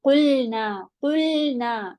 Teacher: लाम पे कलकला नहीं देते, लाम पे साउंड नहीं जाती